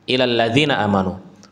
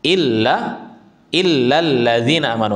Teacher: Lamnya itu ada tasydid, ada penekanan di sana.